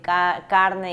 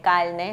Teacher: en vez de decir carne, dice calne, o sea, está sustituyendo la R con la L